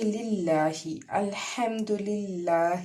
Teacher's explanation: للہ الحمد للہ، ہا جو ہے وہ حرف حلقی سے ہے، جیسے ہم نے حمزہ ادا کیا تھا ویسے ہی یہ ہا ادا ہوتا ہے۔ حلق کے نچلے حصے سے اس کو ادا کریں گے · لفظ اللہ باریک پڑھیں گے، نرمی سے ادا کریں گے